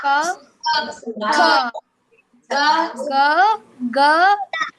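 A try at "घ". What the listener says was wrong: నువ్వు చూడు నాన్న గెండు ఒకేలాగా పలుకుతున్నావు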